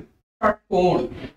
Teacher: जीभ हमारी ऊपर वाले दांत और ऊपर वाले तालू के बीच में मुड़ कर जाती है · यह मूर्धन्य श होता है, ये कुछ कुछ ख की तरफ बोलते हैं। जीभ को मोड़कर आप स का उच्चारण करेंगे, निकलेगा आपका ष।